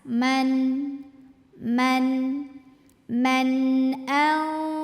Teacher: nun mati kalau ketemu sama huruf tenggorokan salah satunya adalah Hamzah maka Nun ini kita bunyikan dengan n jelas